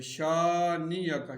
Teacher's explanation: اسی طرح نون مشدد ہے تو یہاں پر بھی غنہ ہوگا، اور شین کے بعد الف ہے، الف مدہ ہے تو اس کو ایک الف کے برابر کھینچیں گے اور اس کاف کو بھی باریک پڑھیں گے۔